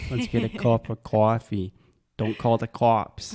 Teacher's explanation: they have the traditional Boston accent which means they are changing a lot of vowel sounds making them more open